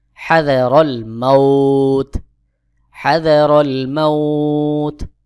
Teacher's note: ওয়াও সাকিন এবং ইয়া সাকিন এর আগের হরফে জবর, পরের হরফে থেমে গেলে, যেমন ওয়াও সাকিন আছে, এর আগের হরফে জবর আছে, তার পরের হরফে আমি থেমে গেলাম, ওয়াকফ করলাম, এখানে এক আলিফ টান দিয়ে পড়তে হবে। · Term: মাদ্দে লিন